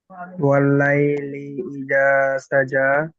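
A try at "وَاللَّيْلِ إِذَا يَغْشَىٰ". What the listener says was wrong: না, সাজা কোথায় পাচ্ছেন এখানে? আপনি দেখে পড়েন, ওয়াল্লাইলি ইযা ইয়াগশা।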